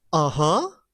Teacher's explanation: going down and going up is a low pitch is a low pitch you tend to agree on something uh-huh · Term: tone number three